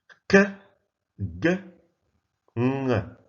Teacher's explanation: These sounds are produced when the back of the tongue comes into contact with the velum or the soft palate. Picture, you see, the back of the tongue in contact with the velum. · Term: velar sounds